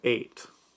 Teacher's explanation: Ate has a longer tsere vowel and receives the main accent.